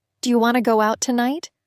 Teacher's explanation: Notice how do you becomes dia and to becomes ta.